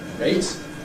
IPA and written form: reɪt (rate)